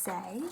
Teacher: we hear the sounds s and a, s being a unvoiced fricative. To produce that, the air builds up behind an obstruction, and then it's pushed through a narrow constriction.